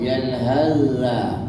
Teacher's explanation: Ini sa boleh masuk dalam za kerana tak ada sifat tebal dalam sa. Kalau berhenti beres yalhaz. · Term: mutajanisan